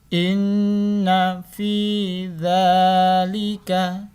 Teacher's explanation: Nun sukun dibaca gunnah. Jadi ditekan dua dan didengar.